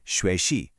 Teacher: 2nd tone into that 3rd tone dip, like shui shi.